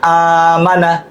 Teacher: হামজার হরকতের সাথে একালিফ টানলে এটা হচ্ছে মাদ্দে বদলের মধ্যে চলে আসবে। এটা কিন্তু মাদ্দে হরকত দিয়ে আমরা টেনে পড়েছি, হামজার সাথে হামজার হরকতের সাথে টেনে পড়া যায় এমন মতকে মাদ্দে বদল বলে।